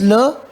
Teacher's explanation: two gaps are left so air can pass easily through that therefore it is called lateral